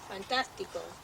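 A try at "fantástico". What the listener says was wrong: You had the accent in the wrong spot.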